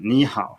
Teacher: when you have two low, you go up on the first